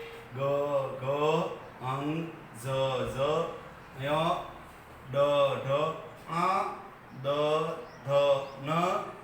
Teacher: બધા ઘોષ છે. કારણ કે એ બધા નાદ તંત્રીને કંપાવે તે બધા ઘોષ